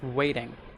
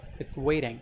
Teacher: if you're trying to learn some American accent, it's waiting, right? Just replace the T with D.